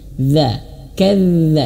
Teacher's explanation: ini kurang mengalir suaranya ya dia terlalu menyentuh ya terlalu merapatkan ujung lidah menyentuh ujung gigi atas terlalu merapat ini keliru ya lebih tepatnya dia mengalir suaranya K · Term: huruf dalal